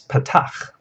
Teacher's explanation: This vowel has a very open sound. Your mouth is open and full when you say it. And it's kind of a short vowel.